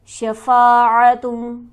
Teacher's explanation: شفا کے فا پر ہمارے پاس حرف مدہ موجود ہے، اسے ہم کھینچیں گے 1 الف